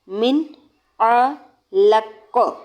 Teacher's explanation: انسان من علق، دیکھیے نون ساکن کے بعد عین آ رہا ہے حروف حلقی میں سے، تو نون کی آواز کو ظاہر کر کے پڑھیں گے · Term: اظہار